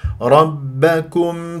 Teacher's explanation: شديده مجهور ما ما اقول رب ما اسويها كانه بي الانجليزي كم مرققه ميم مظهره ولا اسحب ضمه الكاف